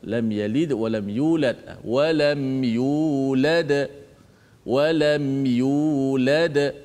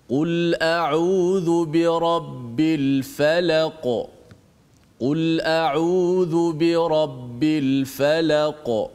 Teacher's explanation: bila kita wakaf salah satu daripada huruf qalqalah, maka qalqalah itu jadi qalqalah yang kubra, yang kuat sikit.